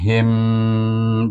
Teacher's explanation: dengung dengan dua harakat pada huruf mim